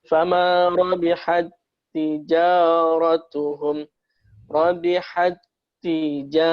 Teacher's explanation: Tapi dengan hukum tahsin ini, maka ini disebutkan idgham mutamatsilain, maka taknya tidak kita menjadi hamz tetapi seakan-akan bertasydid atau lebur masuk di tak yang kedua.